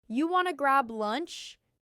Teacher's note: Do you want to becomes, do you wanna in casual speech?